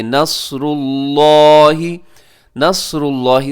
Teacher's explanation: صاد موٹا رکھیے گا، لفظ اللہ موٹا پڑھا جائے گا۔